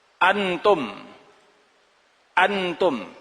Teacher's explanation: Tidak singgah nunnya. Tidak tertahan nunnya.